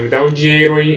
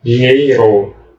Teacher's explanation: Sem o I no meio. É muito comum na fala a gente cortar essa semivogal U e a semivogal I dessas palavras.